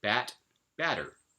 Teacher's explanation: in between two vowels with the second one unstressed it becomes a tap